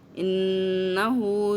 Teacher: نون شد کے ساتھ آ رہا ہے اس لیے ہم اس کو ڈبل کھینچیں گے